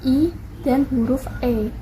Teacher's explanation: vokal depan dimana lidah Berada di posisi depan